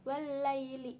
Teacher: alif lam syamsiyah karena huruf alif lam bertemu huruf Syamsiah lam dibaca idgham masuk ke huruf lam